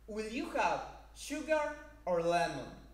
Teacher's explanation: in the second alternative the intonation pattern start from tone number two it rises to tone number three and then it falls to tone number one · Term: rising intonation